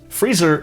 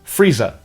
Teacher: the Cockney dialect and most dialects of England are non-rhotic, meaning that the R consonants are only pronounced before vowels. Freezer in North American English is Frieza in Cockney English, and Lisa rhymes with Frieza.